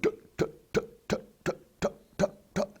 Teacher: There's no voice in it. It's just the air being released by the tongue, and it makes a little pop sound